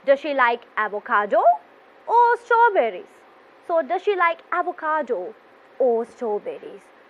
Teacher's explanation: here we can see this rising then falling pattern of intonation so the first choice you have to raise your voice and